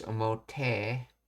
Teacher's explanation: Dialect slang in rough masculine or certain dialect speech, often associated with edo-bin or anime characters. The final I sound of I adjectives is shifted to e. So omoi becomes omote.